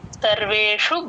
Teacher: Drag చేస్తే స కింద స వత్తు క్లియర్ గా వినిపించేస్తుంది. యస్స సర్వేషు ఆ షు షణ్ముఖ ష అండి ఆ షు కి దీర్ఘాలు లేవు